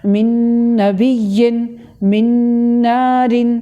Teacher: یہ جو نون اور نون کو ملایا یہ ہو گیا ادغام، اور یہ جو ناک میں آواز لے کے گئے یہ ہو گیا غنہ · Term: ادغام بالغنہ